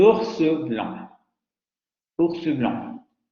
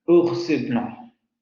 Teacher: meten la vocal media central, en donde generalmente, en donde no la esperaríamos encontrar.